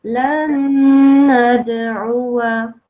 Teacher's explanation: And this one, there is a noon and there is a basically double noon because of the shadda. So that one, obviously, we have to make a gunna sound for 2 seconds